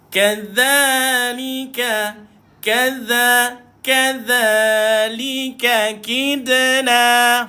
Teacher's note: Dha ujung lidah dikeluarkan tuan-puan.